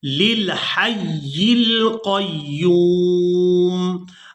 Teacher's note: یہاں پہلا لام کو دوسرے لام ساکن کے ساتھ ملائیں گے، لام زیر للحی القیوم۔